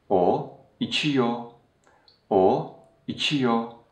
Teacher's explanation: So the re sound at the end of the tense suffix is silenced. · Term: re sound is silenced